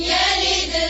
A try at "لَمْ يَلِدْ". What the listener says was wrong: لام کی زیر کو باریک کریں.